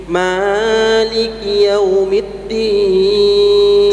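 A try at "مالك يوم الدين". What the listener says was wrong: sedikit lagi minimnya jangan terlalu panjang dua harakat saja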